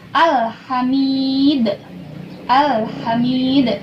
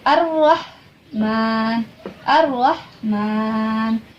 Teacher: Pada alif lam syamsiyah dibacanya dimasukkan, terus ada tasdidnya.